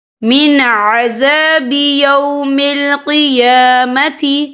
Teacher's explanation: لیفتدوا بہ من عذاب یوم القیامت، یا دیکھیں من، یہاں نون ساکن ہے، نون ساکن کے بعد جو ہے عین آ رہا ہے، اور عین جو ہے حروف ہلکی کا ورڈ ہے تو ہم یہاں اظہار کریں گے، ہم اسے بنا غنہ کے پڑھیں گے۔